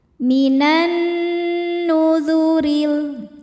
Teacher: Maka alif lamnya tidak dibaca, kita masukkan langsung ke nun, diidghamkan atau disebut idgham syamsi. Minan, nunnya gunnah musyaddadah karena nun bertasydid. Cara bacanya berdengung, tahan dengungannya kurang lebih 2 harokat.